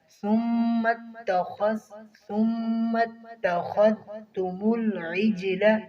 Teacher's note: خا کو موٹا کریں گے اور ذال کو نرمی کے ساتھ پڑھیں گے